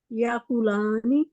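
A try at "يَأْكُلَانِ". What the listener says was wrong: آپ حمزہ نہیں کہتے ہیں جھٹکے کے ساتھ, یاکلانی آپ کہہ رہے ہیں.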